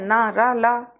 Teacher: इन ध्वनियों का उच्चारण जीभ के अग्रभाग द्वारा मसूड़े के स्पर्श से होता है। न र ला बोल के देखिए, ऊपर आपकी जीभ मसूड़ों से स्पर्श हो रही है। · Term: वत्स व्यंजन